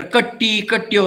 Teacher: They replace R with another double T.